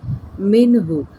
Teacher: نون ساکن کے بعد آگے ہا آ رہی ہے تو ہم نے اظہار کرنا ہے